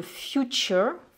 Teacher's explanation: j'ai prononcé aussi ce TUR comme un chur